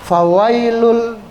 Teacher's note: Ya sukun. Ya sukun, huruf sebelumnya huruf waw, harokatnya fathah. Ya, tidak boleh dibaca panjang.